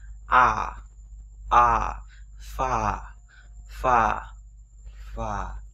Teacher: âm a dài nó không phải là âm á mà nó là âm a rõ ràng và dài ra.